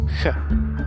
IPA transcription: x